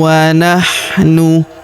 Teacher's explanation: Kalau kita berhenti di sini ya terdapat tanda berhenti waqala waman ahsanu minallahi [Musik] kalau kita lanjut maka tanwin annya melebur ke huruf wau yang berharakat tasydid ya kita tahan dan tekan serta kita dengungkan